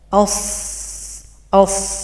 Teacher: ada suara yang naik ke langit-langit dan hurufnya dibaca tebal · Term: Istia